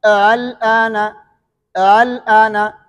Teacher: اور جب اس میں ابدال نہیں کریں گے، دونوں حمزے پڑھیں گے تو دوسرے حمزے میں تسہیل ہوگا